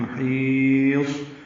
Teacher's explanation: محیص ہا وسط حلق سے ادا کریں گے، لمبا کریں گے کیونکہ یا مدہ کے بعد صاد ساکن پہ وقف کر رہے ہیں. محیص صاد پہ ہمس ہوگا یعنی سانس کی آواز جاری رہے گی.